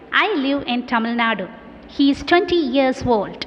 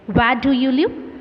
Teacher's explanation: falling tone it is used to convey information in a matter of fact way